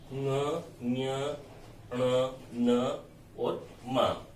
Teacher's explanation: ऐसे व्यंजन जो नाक से बोले जाते हैं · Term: नासिक के व्यंजन